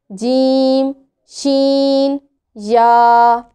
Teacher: हरूफ़े शजरिया 3 हैं, जीम, शीन, या। वस्ते ज़ुबान जब बिलमुकाबिल ऊपर के तालू से लगे उससे जीम, शीन, या अदा होते हैं।